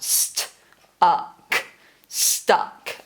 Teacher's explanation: there's a really quiet t sound in that word